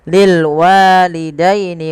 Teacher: fathah bertemu dengan alif kecil, dia mad tabi'i panjangkan dua harakat